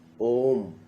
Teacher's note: ठीक है, प्लुत स्वर, इस स्वर के उच्चारण में ह्रस्व स्वर से 3 गुना समय लगता है